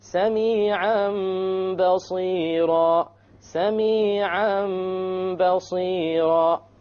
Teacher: We change the tanween into a meme, and that is called iqlab.